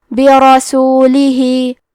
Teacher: ہم حرف را کو موٹی آواز میں پڑھیں گے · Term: تفخیم